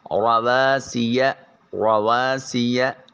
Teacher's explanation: سین کی آواز ادائیگی کے وقت سیٹی کی آواز آنی چاہیے، اور یا جو ہے اس کو لمبا نہیں کریں گے۔